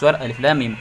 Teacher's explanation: Alif Lam Mim yang benar lamnya panjang setengah Alif terus mimnya gunahnya panjang juga